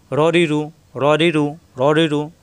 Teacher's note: জের আসলে রি পাতলা হয় রি। পেশ আসলে রু মোটা হবে রু